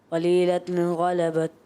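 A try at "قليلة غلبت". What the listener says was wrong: پھر ابھی غننے کی آواز آ رہی ہے قلیلۃ غلبت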